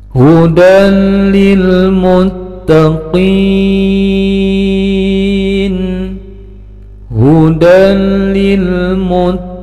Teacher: Taqin. Ada tanwin fathah bertemu dengan lam, maka harus dikasih harokat tasdid karena menjadi idgham bila gunnah. Bacaannya ditahan, tidak mendengung, pendek. Kemudian ujungnya madtabi'i bertemu dengan nun yang disukunkan karena berhenti menjadi mad arid lisukun, panjangnya 6 harokat.